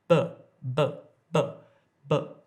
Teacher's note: when I say but there's no air coming out